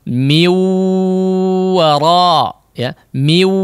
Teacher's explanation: Ketika hidungnya ditutup tidak ada perubahan suara, artinya tidak ada gunnahnya, tidak ada peran khayshum di situ. · melupakan gunnahnya, hanya memanjangkan suara yang keluar dari jauf, yang keluar dari mulut saja ya, rongga mulut sini.